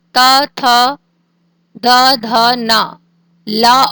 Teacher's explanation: इसके बाद है लिरितु लसानाम दंतः। उच्चारण स्थान है दंतः